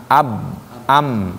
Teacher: Jadi bibirnya ditempelin ba dengan ma.